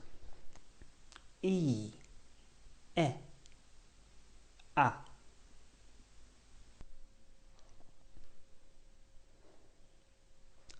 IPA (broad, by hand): iː, e, æ